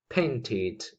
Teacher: Again, id sound because it ends with a T. We have a T at the end of the infinitive.